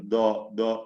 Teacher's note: ദാലിന് തഫ്ഖീം കൊടുത്ത് ഉച്ചരിക്കുക, അത് നാവിന്റെ അറ്റത്തിൽ നിന്ന് പറയുന്ന രീതിയാണ്. അത് തെറ്റാണ്. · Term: തഫ്ഖീം ചെയ്യപ്പെട്ട ദാല്